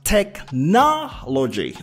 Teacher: the stress is on the second syllable here